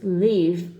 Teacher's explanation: unvoiced F the word is leave with a voice v v keep the voicing going throughout the whole word and voice the V